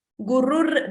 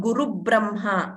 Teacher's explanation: That R is there. Repha. Repha is there. Half R. So that should be heard clearly.